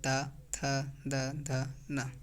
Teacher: दंतीय व्यंजन वर्णों के उच्चारण में जीभ का अगला भाग ऊपर के दांतों को स्पर्श करे, जैसे ता, थ, द, ध, न, यह दंतीय व्यंजन होते हैं।